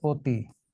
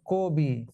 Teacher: আদ্য অ এর পরে হ্রস্বই দীর্ঘই থাকলে আদ্য অ কি হয়ে যাবে? সংবৃত, মানে ও হয়ে যাবে।